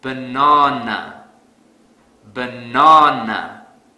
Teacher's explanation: I will stress the second syllable really hard.